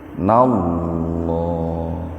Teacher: Jadi lamnya dibaca tebal, lafaz Allahnya dibaca tebal